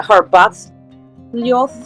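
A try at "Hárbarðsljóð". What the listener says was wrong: Harbathsljoth. I don't think you have to say the J. I don't think you do.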